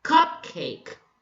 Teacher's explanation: Both syllables are stressed. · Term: spondee